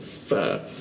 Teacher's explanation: fa digigit bibir bagian bawahnya